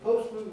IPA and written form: ˈpəʊsmən (postman)